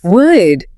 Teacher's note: you have a hard D sound at the alveolar ridge, which is right behind your top teeth, Would. followed by a Y sound, which is a palatal glide.